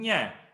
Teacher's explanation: So it should touch, the center part of tongue should touch up. Nya. And no nose should be used. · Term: talavya